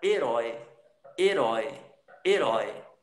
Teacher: isso é um ditongo aberto, porque ele está com um som forte, está acentuado